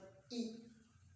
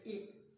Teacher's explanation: अब ई का जो जीव का अगला भाग है वह सक्रिय होता है, वह उठ रहा है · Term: अग्र भाग